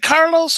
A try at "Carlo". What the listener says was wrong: Carlo, no S.